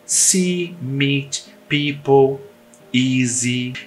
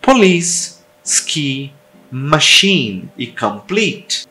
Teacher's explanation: longo e claro ou seja ele não é mascarado Por nada é um som de i puro é como o som do I no português porém ele é longo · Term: I longo